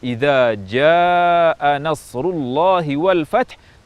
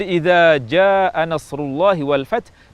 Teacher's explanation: ja'a seharusnya diucapkan dengan panjang mad yang lebih dari dua harakat. Sehingga pengucapan idza jaa nasrullahi wal fath tidak boleh diubah menjadi idza jaa nasrullahi wal fath dengan panjang dua harakat.